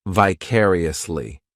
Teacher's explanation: this adverb has five syllables and the stress is on that second syllable